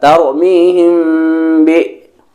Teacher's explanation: Mim sukun ditahan 2 harokat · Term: ikhfa syafawi